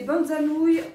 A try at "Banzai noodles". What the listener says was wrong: C'est des banzai noodles. T'as dit banzai nouilles. T'as dit banza noodle?